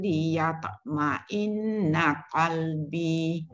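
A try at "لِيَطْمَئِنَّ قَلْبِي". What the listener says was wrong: Liyatok tu tebal sikit dan dengung pada ma'in tu. Liyatma'inna qalbi.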